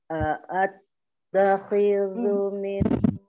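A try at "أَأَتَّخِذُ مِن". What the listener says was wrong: Masih diseret, Om. Jangan a'at. Ya. Langsung a'at. A'at. A'at.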